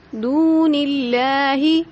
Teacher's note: یہاں پر ماں کو ہم نے ایک الف کے برابر کھینچا، دون اللہ، دو کو ہم نے ایک الف کے برابر کھینچا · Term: مد اصلی